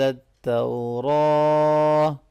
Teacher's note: من قبل ان تنزل التوراة، ان اس نون ساکن پہ اخفا ہوگا، تنزل التوراة، تو یہ واو لین ہے، اس کو نرمی سے ملائیں گے